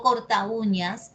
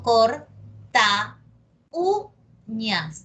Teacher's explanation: Pero cuando yo lo junto a corta y lo pronuncio y digo corta uñas, ¿ok? La cerrada U está sonando más que la abierta A. Y entonces cada vez que la cerrada suene más que la abierta, se le tilda. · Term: hiato acentuado